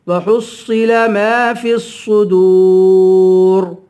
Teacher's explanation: واو حرف مدہ ہے, ایک الف کے برابر کھینچ کر پڑھیں گے. آخر میں را ہے, اس را کو پر پڑھیں گے, موٹا پڑھیں گے